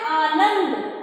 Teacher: नाव के ऊपर विशेष बल पड़ रहा है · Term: बलाघात